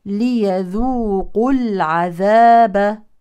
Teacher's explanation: لو وقفنا على كلمه العذاب تكون الباء ساكنه مقلقله · ليذوقوا العذاب ليذوقوا العذاب وعند الوصل يلتقي ساكنان الواو واللام القمريه الواو حرف مد اذا يحذف عند الوصل للتخلص من التقاء الساكن